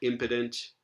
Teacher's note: impotent, where this is an O vowel underlyingly, yet it's not stressed.